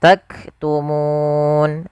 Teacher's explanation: di sini munya panjang dulu baru matikan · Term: Mad Arid lisukun